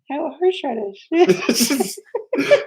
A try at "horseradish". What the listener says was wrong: You're saying it right. It's more of a, I don't know, but you got something going on with that H.